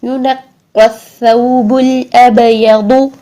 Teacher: اب با پر ہم قلقلہ کریں گے، ٹھیک ہے. با ساکن کو جب ہم نے دیکھا کہ 5 حروف کو ہم ساکن حالت میں ہلائیں گے، قاف، طا، با، جیم، دال.